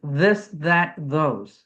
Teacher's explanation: Voiced is this that those. Okay. You're making a sound with your vocal cords.